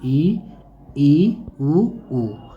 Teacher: जिन स्वरों के उच्चारण में मुख द्वार लगभग बंद रहता है उसे संवृत स्वर कहा जाता है